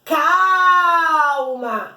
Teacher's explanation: é o cal que sai mais demorado, mais pausado. Então é ele a minha sílaba tônica.